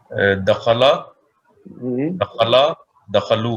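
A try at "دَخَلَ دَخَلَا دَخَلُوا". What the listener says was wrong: اچھا اب جب آپ نے ماشاءاللہ صحیح کیے, جب آپ پہلا اور دوسرا صیغہ بولتے ہیں نا تو ایسا لگتا ہے حرکت کا فرق محسوس نہیں ہوتا. اس میں جو حرکت ہے وہی اہم ہے.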